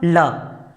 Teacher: पार्श्विक का मतलब होता है बगल, मतलब बोलते हुए बगल से हवा निकलती हो, बगल से, तो ये होता है अपना ल वर्ण।